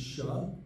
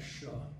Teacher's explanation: There's s, like us, sa, and then there's sha, and then there's a further back sha. And it's kind of like in the difference if you say the word should, you can feel where that is, should.